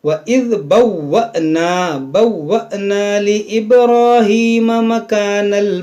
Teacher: جو الف کے اوپر جزم ہے یہ حمزہ ساکنہ ہے، اس کو جھٹکا دے کر پڑھیں گے